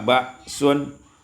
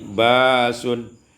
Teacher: ibdalul hamzati alifan ditukar hamzah dengan alif